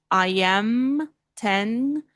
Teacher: Bilabial, exato. Encosta os dois lábios. Então aqui, I am. Então tenha certeza que você está fechando a boca aqui para falar.